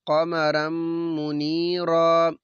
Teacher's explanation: یہاں پہ را کے اوپر 2 زبر تنوین ہے، بعد میں میم، تو ہم نے ادغام مع الغنہ، ادغام بھی کرنا ہے، غنہ بھی کرنا ہے۔